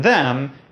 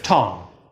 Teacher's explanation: You also get [ð] for the ‘th’ in “them”, and [ŋ] for the ng sound at the end of “tongue”.